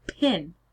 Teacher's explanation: It sounds a little bit different, but it doesn't change enough to be considered a different phoneme. So if we look at pin, the p is aspirated, so pin.